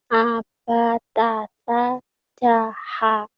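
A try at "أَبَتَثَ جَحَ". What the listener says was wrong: Iya, jaknya tebalin dikit nanti ya. Abatasa jaha.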